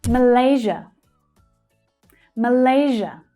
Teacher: The second syllable there is the stressed one.